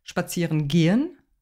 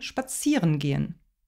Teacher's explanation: nicht gehen sondern spazieren wird betont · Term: hauptakzent